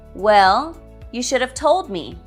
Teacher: Both should and have are weak here.